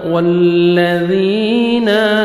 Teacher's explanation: या मद्दा 1 सेकंड आपने ज़ाल को खींचना है और ज़ाल को नरमी से अदा करेंगे।